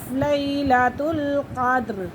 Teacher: یہ آئلین، لیلۃ القاف دال زبر قد، را زیر ری، قدری، دال کے پر قلقلہ ہو رہا ہے